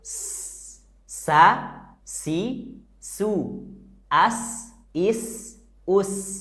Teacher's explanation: saat nyebut huruf Sin dekatkan ujung lidah kita ke atas gigi seri bawah